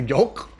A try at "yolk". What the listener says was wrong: Yolk. But I think you're overpronouncing the L. yolk,